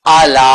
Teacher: یہ یاد رکھیے حمزہ لمبا نہ ہونے پائے، لام کو لمبا کرنا مد کی وجہ سے